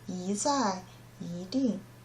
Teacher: if E plus a fourth tone, it will change to the second tone, 一. For example, 一在, 一定.